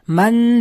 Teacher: Man degan ushlab turilyapti, ikki harakat miqdoricha n ni ushlab turasiz, o'sha-o'sha manna o'qiladi. Faqat shu n harfida ikki harakat g'unnani ushlab turasiz va n ni aytayotgan paytda labingizni oldinga chiqarib turasiz.